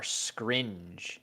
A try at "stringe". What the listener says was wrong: Stringe with the T,